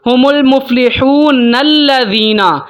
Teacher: اگر میں پیچھے سے ملا کے پڑھوں گا، میں پڑھوں گا ہم المفلحون الذین. الذین، مفلحون کا جو نون ہے اس کو میں نے ملایا اگلے نون کے ساتھ. سینٹر میں جو نون سے پہلے جو حمزہ آ رہی ہے اس کو میں نے ختم کر دیا